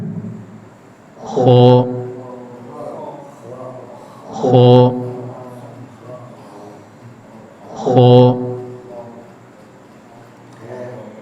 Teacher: Huruf kha keluar dari ujung tenggorokan, yaitu berada antara langit-langit atas bagian belakang dengan akar lidah.